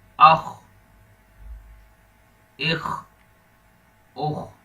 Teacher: یہ خا موٹے حروف میں ہے اس لیے اس کو موٹا کر کے پڑھنا ہے